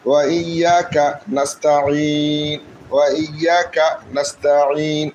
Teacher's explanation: আমরা যখন থামবো তখন এটা মধ্যে আরজি হিসাবে 3 আলিফ টান হবে